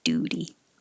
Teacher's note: The T in duty changes to a D and it sounds like duty.